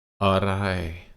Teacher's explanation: first half of the word is low tone second half comes back up to your normal voice so dip down for it